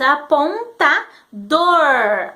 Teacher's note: olha o que a língua faz o r retroflexo ele enrola a língua